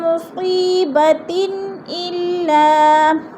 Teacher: اب مصی یا ساکن سے پہلے صاد کے نیچے زیر ہے تو ادھر یا مدہ ہو رہا ہے، اور دو زیر تین آگے حروف حلقی میں سے حمزہ آ گیا تو ادھر اظہار ہو رہا ہے، اظہار حلقی غنہ نہیں کریں گے